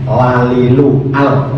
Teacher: lam itu kan mestinya makhrajnya ujung lidah mengenai gusi